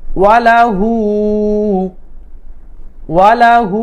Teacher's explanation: ওয়ালাহু, ওয়াজর ওয়া, লাম জবর লা, হা উল্টা পেশ এক আলিফ লম্বা করতে হবে